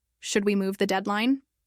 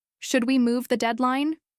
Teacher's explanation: her voice stayed flat, with no rise at the end. It sounded more like a suggestion or a comment.